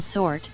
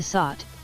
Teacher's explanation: the open O in sort, as opposed to sot, where the O is closed